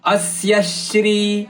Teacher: ಅಸ್ಯಶ್ರೀ ಅ ಮೇಲೆ ಮತ್ತು ಸ ಮೇಲೆ ಆಘಾತ ಇದೆ